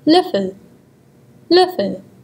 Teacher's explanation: have the tongue in the mid position with the front of the oral cavity half open while using slightly rounded lips.